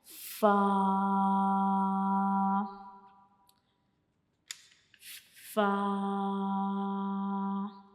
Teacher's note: हमारे जो ऊपर वाले सामने वाले दांत होते हैं उनके जो किनारे होते हैं वो हमारा जो नीचे वाला होंठ होता है उसके अंदर वाली साइड पे जो है वो टच करता है, तो फ़ा अदा होता है।